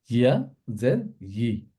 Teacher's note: ইয়াটা যখন আমরা প্রোনাউন্স করি আমাদের জিভের মাঝখানটা এটা উপরে তালুর সাথে লাগবে। জিহ্বার মধ্যখান তার বরাবর উপরের তালুর সাথে লাগিয়ে ইয়া আমরা প্রোনাউন্স করি।